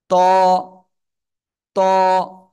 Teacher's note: জিহ্বার আগা উপরে দুই দাঁতের গোড়ায় লাগান, লাগিয়ে মোটা আওয়াজে উচ্চারণ করতে হবে।